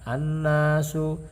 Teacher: cara membacanya al tidak dibaca karena dimasukkan kepada huruf nun, sehingga karena tidak terbaca maka hukum bacaan dari al ini adalah idgham syamsiyah, artinya dimasukkan kepada huruf sesudahnya.